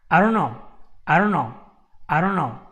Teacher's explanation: This T goes away, all right? Because we don't like it. In English, we don't like T's.